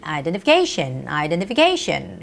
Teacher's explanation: word identification see how long the word is it's identification identification the stress goes on the syllable ca a is the vowel that has the stress